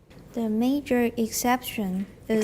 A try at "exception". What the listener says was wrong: exception. Look at my mouth. Exception, not exception. Exception. Don't round. Exception. Everyone, exception. Don't round the sh. There's too much rounding in Taiwan normally.